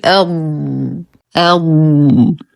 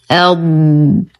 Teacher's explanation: نقف على الضاد بالاستطالة فنقول أض. من الأخطاء الشائعة أن تقلقل أو تهمس فيقال أض أو أض وهذا خطأ.